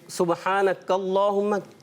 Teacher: اللہ کا لام اس سے پہلے زبر آ رہا ہے اس لیے وہ موٹا کریں گے · کاف جو ہے باریک رکھیں گے نا تو صحیح ہو جائے گا. اس کو موٹا نہیں کرنا.